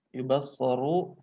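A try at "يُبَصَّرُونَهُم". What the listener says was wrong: Yubassaruna fi'il mudhari. Jangan yubassaru doang. Yubassaruna fi'il mudhari, wawunya.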